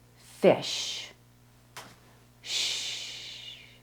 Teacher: You're going to show your student they want to smile while making the sound. The SH sound, your lips push forward, as in the word fish. Shh. The T and CH sound can also sound similar.